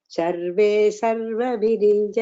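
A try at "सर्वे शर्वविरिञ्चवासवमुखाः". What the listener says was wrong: Here sarve sharva, the difference should be properly heard. Sarva, sa is Saraswati and Shiva, Shakar.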